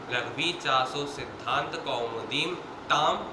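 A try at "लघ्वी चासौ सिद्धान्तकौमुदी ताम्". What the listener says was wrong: कौमुदीम बोल गए थे।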